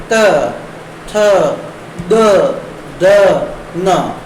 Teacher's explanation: त वर्ग के जो वर्ण है उनकी आवृत्ति हो रही है, और त वर्ग को बोलने के लिए हमारी जो जीभ है वो दांतों के स्पर्श करती है। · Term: दंत्य